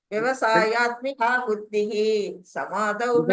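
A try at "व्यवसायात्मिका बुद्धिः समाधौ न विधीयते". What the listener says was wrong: புத்திகி. Okay okay, புத்தி தான் மாதாஜி, புத்திகி இல்ல, புத்தி தான் வருது இங்க. அது நடுவுல வரப்போது சொல்லக்கூடாதுன்னு சொல்றாரு மாதாஜி, அவர் கிருஷ்ணர்ஜி.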